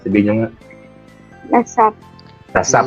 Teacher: lasap, di ba? Parang yung salubong, nagsalubong yung labi niyo, di ba? Lasap. Sarado siya.